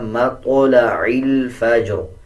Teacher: جب وقف کریں گے تب بھی را کو پر پڑھیں گے اور زیر کو سائلنٹ کر دیں گے